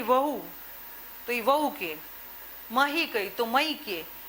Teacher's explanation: ઉત્તર ગુજરાતમાં હનો શ્રુતિલોપ થાય છે, ઘસારો થાય છે, નૈવત બોલાય છે.